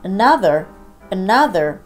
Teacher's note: Another▁の出だしが曖昧母音の場合、非常にここが目立つ結果になるんです